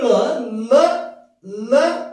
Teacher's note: ಕೇಶರಾಜ ಹೇಳುವಂತಹ ಈ ಸೂತ್ರದಲ್ಲಿ ಈ ಲಕಾರ ಈ ಲ ಲ ಅಂತ ನೀವೇನ್ ಪ್ರೊನೌನ್ಸಿಯೇಷನ್ ಮಾಡ್ಲಿಕ್ಕತ್ತೀರಿ, ನೀವು ಯಾವಾಗ ಉಚ್ಚಾರ ಮಾಡ್ಲಿಕ್ಕತ್ತೀರಿ, ಲ ಈ ನಾಲಿಗೆಯ ತುದಿ ಈ ವತ್ಸಕ್ಕೆ ತಾಗಿ ಲ ತಾಗಿ ಉಂಟಾಗುವುದರಿಂದ ವತ್ಸಧ್ವನಿ ಅಂತ ಹೇಳ್ತೀವಿ